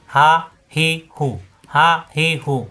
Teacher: মুখ খোলা রেখে উচ্চারণ, কণ্ঠনালীর শুরু থেকে। হা কণ্ঠনালীতে চাপ সৃষ্টি হবে না।